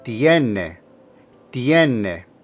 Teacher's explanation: make sure you put the emphasis of pronunciation on the first E